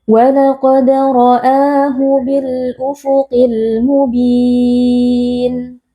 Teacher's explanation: qaf huruf tebal kita baca dengan mengangkat pangkal lidah. Walaqad, ada qalqalah sughra karena ada huruf dal yang posisinya ada di tengah-tengah kalimat.